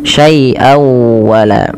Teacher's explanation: masukkan suara tanwinnya pada lafal syaian kepada huruf wau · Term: idgham